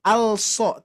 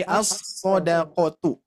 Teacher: Jadi kalau idgham itu memasukkan huruf kepada huruf yang kedua atau bisa jadi istilah yang lain melewati huruf yang sebelumnya dari yang kedua gitu ya. Nah, ini melewati huruf lam langsung ke huruf shad ya